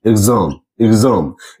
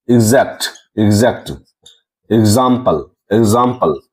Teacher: तो यहाँ हम लोग देख रहे हैं कि एक्स क्या आ रहा है, गजो आ रहा है। मीन्स एक्स का उच्चारण गजो आ रहा है